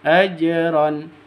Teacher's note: karena ada ya mati diawali dengan kas kasro fasutii ajronima ajron Jim mati Jim sukun ini harus dipantulkan ke huruf jimnya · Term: Qolqolah Sugro